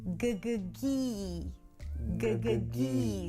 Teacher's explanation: So, the tongue pulls back for the G and then forward for the high E. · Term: high E sound